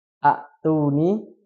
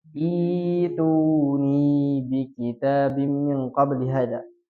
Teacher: cara membaca yang betul adalah dengan menghidupkan hamzah wasalnya dengan kasroh dan mengganti hamzahnya ini dengan ya. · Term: mad badal